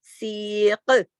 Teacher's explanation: کاف موٹا بھی کریں گے اور کاف پہ کلکلہ بھی ہوگا. سی، اور پھر سین یا زیر سی کو کھینچیں گے، سیق.